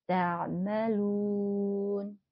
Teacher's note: Domah diikuti waw sukun, mad arid lis sukun, panjangnya 6 harokat